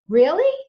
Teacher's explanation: If you tell me that you've got a new job and I want to show that I'm excited, I'm going to use a rising tone.